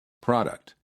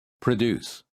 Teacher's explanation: In the first word, the first syllable is stressed, and therefore the PRO sounds like pro. And in the second word, the first syllable is reduced, and the PRO sounds like pr.